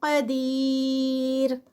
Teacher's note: کل شیء یہاں پر اخفا ہے اور اخفا جو ہے وہ آگے قاف ہے تو ہیوی والا اخفا ہے. قدیر اور اینڈ پہ را جو ہے وہ لائٹ پڑی جائے گی قاف ہیوی